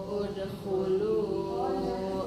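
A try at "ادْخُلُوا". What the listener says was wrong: Dalnya kurang kuat. Lihat masih nyeret bacanya nih. Udkhulu abwaba. Jangan nyeret.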